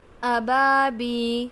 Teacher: ابا، طیرن ابا، با یا زیر بی، یہاں پر دیکھیے یا مدہ ہے، یا ساکن سے پہلے زیر ہے تو یہ یا مدہ ہوگا، ایک الف کی مقدار کھینچ کے پڑھیں گے۔